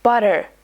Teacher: So instead of saying butter like butter, Americans say it like butter. It's almost like the T becomes a soft D. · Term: flap T